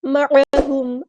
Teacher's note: عین کو وسطی لیکن مڈل تھروٹ سے ادا کریں گے